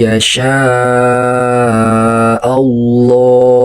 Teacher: Di situ juga ada tafkhim yaitu dibaca tebal Allahu karena lafaz jalalahnya didahului dengan huruf hijaiyah berharakat fathah. · huruf nun mati atau tanwinnya dibaca melebur dan disertai dengungnya ke huruf ya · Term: idgham bigunah